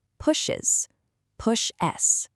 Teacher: When you add that ES to these specific verbs, you're actually creating a brand new extra syllable. Depending on your accent, it sounds like an is or us right at the end of the word. It literally adds an extra beat of rhythm.